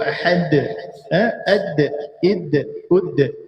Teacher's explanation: Tekanan yang kuat pada makhraj, pada belakang gigi atas. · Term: Qalqalah